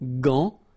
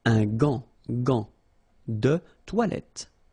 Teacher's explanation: you've got this A-N, so it's nasal, gant, and then final T is not pronounced here